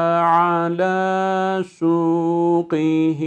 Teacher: Bu ayeti kerimeyi okurken ala suqihi derken orada kesreli bir kaf harfimiz var. Kalın bir harftir. İnceltmemeye dikkat ediyoruz.